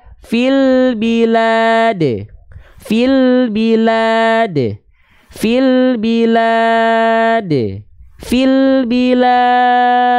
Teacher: Pertemuan antara mad tabi'i plus dengan sukun arid menjadi mad arid li sukun. Mad arid li sukun. Ya, dia boleh dibaca dengan kadar panjang 2 harokat, 4 harokat atau 6 harokat